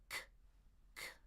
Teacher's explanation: That's the back of your tongue coming up to explode. K. Even further back. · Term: K sound